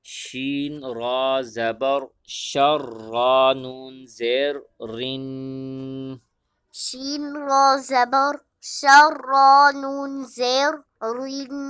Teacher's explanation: شین کے بعد را ہے اور را کے نیچے زیر ہے، لہذا را کو باریک کرنا ہے، اور را کے بعد آگے نون مشدد ہے اور نون مشدد پر غنہ کریں گے۔